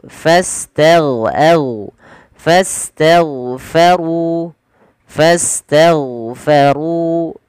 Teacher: tebalkan huruf ru karena dia R tafkhim